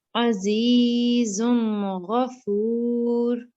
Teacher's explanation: So it's not nasal sound then, right? Yes, it is a clear noon.